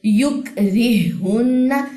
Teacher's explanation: ہا ساکن ہا متحرک دونوں کے مخرج اور صفات سیم ہیں، تو پہلا ہا جو ہے وہ اس پہ ادغام ہم تام کریں گے، اس کی کوئی صفت باقی نہیں رہے گی. را کی زیر اس ہا سے ملے گی. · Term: ادغام مثلین